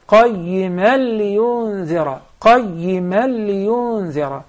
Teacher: For instance, when you recited the second verse, قَيِّمًا لِيُنذِرَ, you did the idgham, but there was a ghunna, like one movement. There is not supposed to be any ghunna in this case because the tanween is followed with the lam.